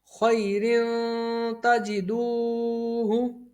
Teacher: تا بھی حرف اخفا میں سے ہے، تو یہاں پر غنہ ہوگا